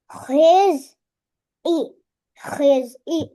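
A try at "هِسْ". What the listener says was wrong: ஹீஸ் அல்ல, ஹிஸ். ஹீஸ் என்று வரப்படாது. ஹிஸ் இ ஹிஸ்.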